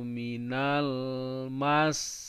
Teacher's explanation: Nah, ditekan mas sampai 2 harakat.